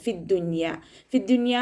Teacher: യ വരുന്ന സമയത്ത് നമ്മൾ സാധാരണ ഇദാം ആണ് ചെയ്യാറുള്ളത് പക്ഷേ ഇവിടെ ഇം ഇഹാർ ആണ് ചെയ്യുന്നത് ട്ടോ നൂനിനെ വ്യക്തമായിട്ട് കേൾപ്പിക്കുന്നുണ്ട് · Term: ഇഹാർ മുത്ലക്